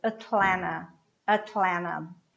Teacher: The last T is cut.